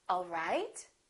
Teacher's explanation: if this is a question I would say it differently the word right the pitch would go up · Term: rising intonation